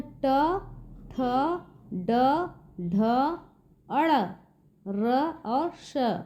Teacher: जैसे कि यहाँ देखिए व्यंजन में ट, थ, ड, ढ, अड़, र और श, इन सब का बच्चों उच्चारण करते समय तालु के पीछे वाले भाग पर जाके टच हो रहा है जीभ हमारा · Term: मूर्धन्य वर्ण